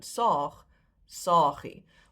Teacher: The diminutive is still pronounced saagie with a long A, even though you've dropped one and it's spelled with one. It's still pronounced as the previous original word.